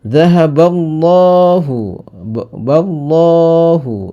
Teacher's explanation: lam jalalah tafkhim, karena sebelum lafaz Allah, lam jalalah Allah itu ada harokat fathah, maka dibaca tebal